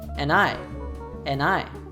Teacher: Furthermore, we can see several examples of connected speech. First, the function word and hooks to the pronoun I, and she drops the D